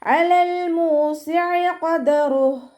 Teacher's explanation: അയനിൻ്റെ സൗണ്ടിനെ തൊണ്ടയുടെ മധ്യഭാഗത്തുനിന്ന് കൊണ്ടുവരിക. ഹംസയുടെ സൗണ്ടായി പോവാതെ നോക്കുക. മീമിൻ്റെ കൂടെ വൗമദ് വന്നു, 2 കൗണ്ട് നീട്ടി കൊടുക്കുക.